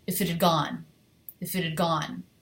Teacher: drop H I'm dropping the H in had I'm reducing the word had a schwa D · gone is much longer than if it had